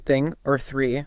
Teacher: the softer breathy one like in thing or three, no voice, just air.